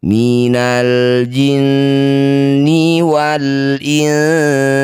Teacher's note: Cara bacanya bunyi nun kita dengungkan dua harakat. · Setiap ada nun atau mim yang bertanda tasydid disebut bacaan gunnah musyaddadah. Cara bacanya bunyi nun kita dengungkan dua harokat. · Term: ghunah musyaddadah